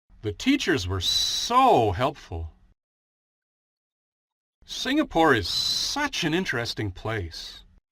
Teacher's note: the two intensifiers, so and such, are stressed. They are emphasized by being longer, louder, and stronger as well. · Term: sentence stress